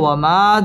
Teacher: ওয়াও ঠোঁট গোল করে উচ্চারণ করতে হবে। ওয়ামা জবরের বাম পাশে খালি আলিফ, মদের হরফ, মদের হরফের উপর চিকন চিহ্ন, বামে হামজা, মধ্যে মুনফাসিল, 3 আলিফ টেনে পড়তে হবে।